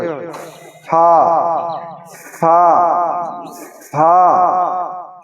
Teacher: উচ্চারণ উপরের দাতের আগা তলের ঠোটের ভিজাংশ